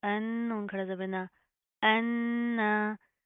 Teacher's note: नून के ऊपर शद आ रही है, गुन्ना करेंगे, नाक के अंदर साउंड पैदा करेंगे, पहले गुन्ना करेंगे फिर खड़ा जबर की अदायगी होगी।